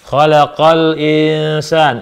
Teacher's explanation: Suara nun sukun dibaca disamar ya. Disamarkan, ditahan dua harakat. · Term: Ikhfa hakiki